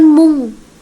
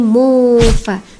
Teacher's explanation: Nun mati bertemu dengan fa disebut dengan ikhfa hakiki. Bacanya samar ke huruf ikhfa. · nun mati bertemu dengan fa itu samar bacaannya teman-teman, 2-3 harokat